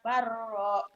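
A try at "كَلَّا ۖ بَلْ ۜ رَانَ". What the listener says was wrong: Bukan, ini sakta. Nih ada sakta tulisan tuh di atas. Sakta itu diam sebentar tanpa ngambil napas. Kalabal rona ala qulubihim ma kanu yaksibun. Diam sebentar tanpa nyuri napas, tanpa ngambil napas yuk.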